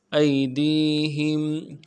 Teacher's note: حمزہ کو یا کے ساتھ ملانا ہے، یا لین ہے، بغیر کھینچے پڑھیں گے۔ یا لین، یا ساکن اس سے پہلے زبر ہو یا کسرہ ہو یا پیش ہو، زبر یا پیش ہو تو یا لین کہلاتا ہے، اگر زیر ہو تو یا مدہ کہلاتا ہے۔